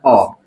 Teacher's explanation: तो जीभ के बीच वाला हिस्सा से एक का उच्चारण था जिसका नाम है अ, क्या है अ के उच्चारण में जीभ है बीच में रहता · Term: मध्य स्वर